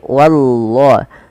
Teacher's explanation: Pada lafal wallah usahakan jangan menebalkan wa, tapi dia wa-nya tipis. Wallahu, bukan wallah, bukan, tapi wallahu.